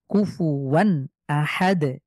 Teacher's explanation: শেষে আমরা সুকুন দিলে এখানে কলকলা করে পড়তে হবে